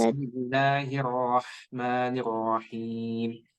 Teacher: langsung melebur ke huruf ro ya karena di sana ada tasdid